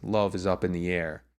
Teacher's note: that want to be stressed are love up and air and then is and in the are those unstressed words in between · the words that want to be stressed are love up and air and then is and in the are those unstressed words in